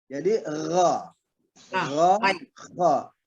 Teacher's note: Kalau ke atas, kalau naik lagi ke tenggorokan lebih atas, dia akan masuk kepada kha. Nah, jangan terlalu atas. Jadi dia ada di bawah kha.